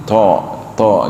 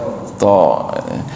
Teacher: Mahraj huruf th diucapkan dengan menyentuhkan ujung lidah kita dengan gusi-gusi gigi seri atas gitu. Jadi cukup tidak memonyongkan bibir.